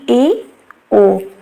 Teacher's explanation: next है अर्ध संवृत तो अर्ध समृत वो वर्ण होते हैं जिन स्वरों के उच्चारण में मुख द्वार आधा बंद रहता है